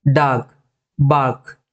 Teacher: ಡಾರ್ಕ್ ರ ಅಂತ ಹೇಳಬಾರದುಆ ಆರ್ ನ ತುಂಬಾ ಒತ್ತುಕೊಟ್ಟು ಉಚ್ಚಾರ ಮಾಡಬಾರದು ಡಾಕ್ ಇಲ್ಲಿ ನಾನು ಆರ್ ನ ಉಚ್ಚಾರ ಮಾಡ್ತಾ ಇಲ್ಲ